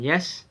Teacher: Made with the tongue close to the hard palate is called palatal. The sound y in yes is palatal.